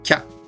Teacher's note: 키야를 한 박으로 빨리 줄여서 하는 겁니다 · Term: 요음